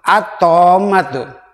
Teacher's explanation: Jelas lamnya dihilangkan. Tidak boleh ada pantulan, tapi ditasdidkan, disidahkan kepada huruf berikutnya.